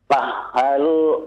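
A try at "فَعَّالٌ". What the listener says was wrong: Bukan ha, itu ain Pak. Ain. Fa'alul. Bukan ha. Ain. A.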